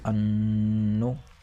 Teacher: کیوں؟ اس لیے کہ یہاں پر نون مشدد ہے، لہٰذا یہ ایک الف کے برابر کھینچ کر اور ناک سے غنہ ہو کر پڑھا جائے گا